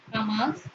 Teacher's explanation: Jamás se pronuncia con mayor intensidad en la sílaba más, la última sílaba. Jamás, palabra aguda.